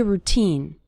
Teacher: The syllable teen is stressed in the word routine.